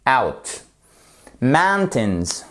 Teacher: vous faites bien votre accent tonique sur la première syllabe